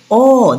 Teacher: ও জীবের স্থানটা লক্ষ্য করবি পেছনে যাচ্ছে। ও দেখবি জীবটা পেছনে কোথাও যেন লুকাবো লুকাবো করছে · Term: পশ্চাৎ